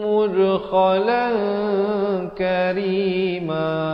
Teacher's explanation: Qalan asalnya qalan, tapi bila datang kaf disamarkan. Ikhfa berarti disamarkan bunyinya di antara tanwin dan kaf, 2 harakat.